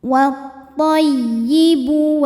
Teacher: Wa tay, masuk ke ya tasydid dibaca dengan nabar, cukup kita naikkan intonasinya